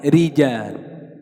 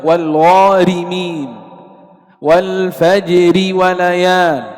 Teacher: إذن حال الوصل ترقق في حالتين، الأولى أن تكون مكسورة. إذن حكم الراء المكسورة وصلا الترقيق